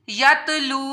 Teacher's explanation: रसूलुम मिनल्लाहि यतलू, यतलू वऊ साकिन है, इससे पहले पेश है तो इस वजह से यहाँ भी इसको एक अलिफ के बराबर लंबा किया जाएगा।